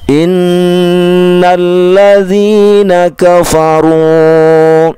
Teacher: ru-nya dua huruf, jangan kepanjangan